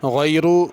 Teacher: غیر اس میں غین بھی پر ہے، را بھی پر ہے